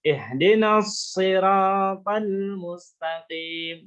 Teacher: Jadi sodnya itu ada desisnya, mendesis. Mendesis seperti suara angsa.